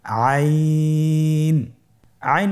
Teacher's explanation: আইন হরফটি উচ্চারণের সময় অবশ্যই তিন আলিফ টেনে পড়তে হবে · আইন হরফটি কণ্ঠনালীর মধ্যখান থেকে উচ্চারিত হয়।